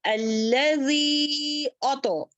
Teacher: मद मुनफसिल है, इसको खींचते हुए पढ़ेंगे 1 2 3 4